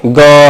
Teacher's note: जब आप गा बोलेंगे ग, तो थोड़ा सा कंपन होता है, वाइब्रेशन होती है